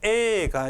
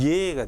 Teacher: 무슨 말이냐면 요드 다음에 모음 여기 에가 있다면 예가 되는 겁니다. 에에 반모음이 붙으면 예가 되죠. 이 요드는 그렇게 이어지는 모음을 이중모음으로 만드는 구실을 합니다. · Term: 반모음 Y